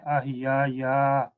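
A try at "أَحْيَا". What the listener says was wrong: No. It's not ya. It is ahya. it's not double.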